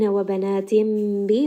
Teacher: لَهُ بَنِينَ وَبَنَاتٍ bi, this is going to be iqlab. Noon sound is going to get changed into a meme.